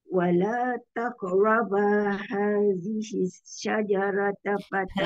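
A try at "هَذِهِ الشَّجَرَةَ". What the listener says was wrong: Hadhihi syajarah tebal roh. Sekali lagi, syajarah tu shin, betul kan shin?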